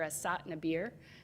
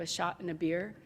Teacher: people would say s instead of sh, so you might go to a bar and hear people order a sot and a beer instead of a shot and a beer.